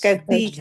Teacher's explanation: سا کی آواز ہے، زبان تھوڑی سی باہر دانتوں سے باہر